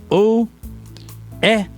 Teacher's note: você tem uma vogal, que é o O, e uma semivogal, ou, que é pronunciada distintamente. É como se fossem duas vogais, é separado. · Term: ditongo decrescente